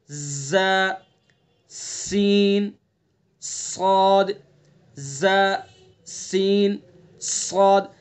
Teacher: جس طرح سے سی ٹی کی آواز نکلتی ہے ان تینوں حروف کو ادا کرتے وقت اس طرح سے سی ٹی کی آواز نکلتی ہے. جیسے ز سین صاد ز سین صاد.